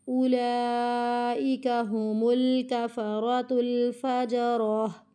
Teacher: اولئک، او کو نہیں کھینچنا